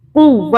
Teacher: واو کی 2 مرتبہ بنے گی، ایک ساکن ہوئے گی پچھلے کے ساتھ ملا کے بنائیں گے، اور ایک اس کے اوپر جو ہے زبر کے ساتھ بنائیں گے۔ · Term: تشدید